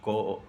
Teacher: जैसे कि क अल्पप्राण ध्वनि है